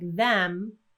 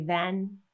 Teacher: speakers of those languages tend to produce an N instead so instead of saying something like them with the lips closed they might say then with the lips open and the tongue behind the top front teeth